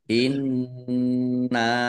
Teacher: Kita lihat tajwidnya. Inna nun tasdid bacaan gunah atau mendengung, dibaca mendengung, ditahan biar tampak dengungannya. Nun fathah alif mat tobi'i, tetapi karena bertemu dengan huruf alif di kata yang berbeda, maka menjadi mad jaiz munfasil.